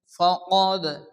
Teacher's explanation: আসছে এখানে থামা যাবে না মিলিয়ে পড়তে হবে ওয়ালা নাযীরিন ফাকাদ দাল সাকিন কলকল অক্ষর হালকা ধাক্কা দিয়ে পড়তে হবে